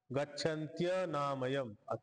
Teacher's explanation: इकार आणि अकार मिळून य बनला